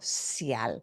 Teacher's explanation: unless you live in Buenos Aires, there is no sh sound